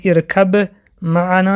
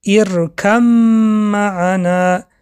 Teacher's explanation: حرف ب را به حرف میم درآورده خواندیم